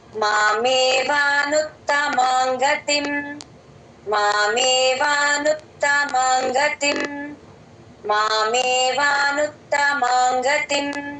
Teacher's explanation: గ ముందు ఉంగు లాగా వస్తుంది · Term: ఉంగ సౌండ్